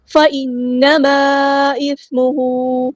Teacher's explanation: إِثْمُهُ، یہاں پہ ہمیں مد دکھ رہی ہے ڈسکنیکٹڈ مد ہے، مد منفصل یعنی چھوٹی مد، ہم نے یہاں پہ 4 یا 5 کاؤنٹ لمبا کرنا ہے ، مد ایک کلمے میں مد ہے، اگلے کلمے میں حمزہ · نون پہ غنہ زمانی ہو رہا ہے، 2 کاؤنٹس رکیں گے یہاں پہ